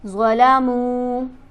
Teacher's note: حرف مدہ موجود ہے میم پر، ایک الف کے برابر کھینچ کر پڑھیں گے